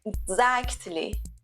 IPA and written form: ɪɡˈzækt.li (exactly)